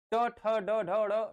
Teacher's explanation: जीभ को पीछे, तालु के पीछे मूर्धन्य स्थान पर ले जाकर के ही बोलना पड़ेगा, अन्यथा आप नहीं बोल पाएंगे।